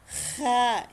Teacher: Ito ay para kang nagagargle. Lumalabas din ito mula sa ibabaw ng lalamunan.